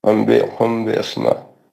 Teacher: میم ساکن کے بعد با آیا اخفاء شفوی ہے یہ